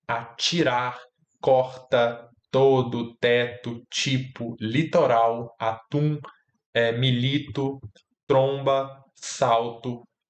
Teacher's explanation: atribuir que o fonema é o t e ele se realiza como tchã quando precede a vogal i